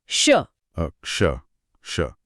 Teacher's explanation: जब आप मूर्धन्य श यानी षटकोण वाला श बोलते हैं, तो आपकी जीभ को मुड़कर तालु के और पीछे वाले हिस्से की तरफ जाना पड़ता है, जिसे मूर्धा कहते हैं।